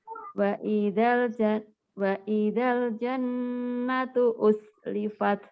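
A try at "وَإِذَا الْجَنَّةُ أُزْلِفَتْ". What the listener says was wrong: Zai. Jangan us. Jangan S ya.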